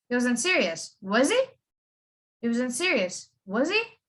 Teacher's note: So it's a rising, falling, rising intonation.